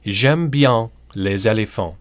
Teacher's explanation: if we put a word with a vowel in front of it like éléphant, elephants of course, the S in les is heard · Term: liaison